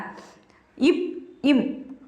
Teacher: இப் இம் ஆகிய இரு மெய்களும் மேல் இதழும் கீழ் இதழும் பொருந்துவதால் பிறக்கின்றன.